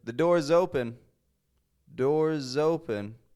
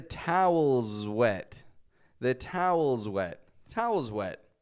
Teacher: is that s is getting a z sound Z it's voiced it's the exact same position as s but Z instead we're adding some voice to this